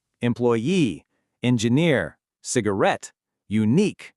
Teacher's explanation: A words ending in suffixes like e, ear, at, and q, they almost always have the stress on that last syllable itself. The suffix basically pulls the stress to the very end of the word. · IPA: ˈ